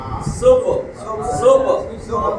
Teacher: এটা কলকলার হরফ, কফ বা জিম দাল, এগুলোতে যখন সাকিন হয় তখন কলকলা করে পড়তে। কলকলা মানে প্রতিধ্বনি, প্রতিধ্বনি, প্রতিধ্বনি শব্দ।